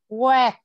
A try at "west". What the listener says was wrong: Got S đi trước.